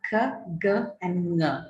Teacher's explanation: K, g, both of them stops, and ng, nasal velar. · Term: velar sounds